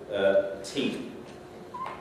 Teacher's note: with the T sound you actually hear the puff of air as well which is the aspiration